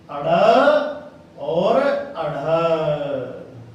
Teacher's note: जिनके उच्चारण में जीभ ऊपर उठे और एकदम नीचे गिरे, उन्हें कहते हैं उत्क्षिप्त।